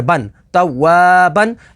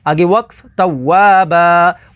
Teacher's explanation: با دو زبر بن، توابن، آگے وقف توابا، وقف تام کی وجہ سے دو زبر کو الف سے بدل دیں گے۔